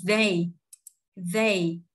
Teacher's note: TH đưa lưỡi ha, cổ họng rung. E với Y thì đọc căng miệng âm E, hạ miệng ha, hạ miệng một nốt đọc âm E. Còn âm Y thì giật cái hàm của mình lên, không có há hàm nữa. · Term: Nguyên âm đôi